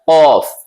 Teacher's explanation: कौफ का मखरज आपने पढ़ा है जबान की जड़ और उसके मुकाबिल ऊपर का तालु। जबान की जड़ आपको बताया गया है टंग की रूट जहां पीछे से निकलता है, आपको जब निकालेंगे खुद पता चलेगा, कौफ।